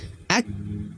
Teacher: Huruf kaf dia memiliki sifat hams, mengalir nafas, dan juga syiddah, tertahannya suara. Jadi Bapak Ibu perhatikan ketika dia sukun, ya, ketika dia mati, maka tertahan dulu suaranya huruf kaf, ak, baru hams, ak.